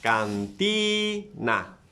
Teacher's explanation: Where is the stress? In the second syllable.